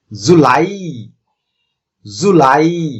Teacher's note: দুইটি সিলেবলের মধ্যে দ্বিতীয় যে সিলেবলটি অর্থাৎ লাই, এটিতে আমাদেরকে একটু উচ্চারণ করার সময় বেশি জোর দিতে হবে